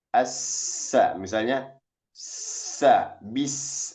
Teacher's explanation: Sofir itu suara yang tajam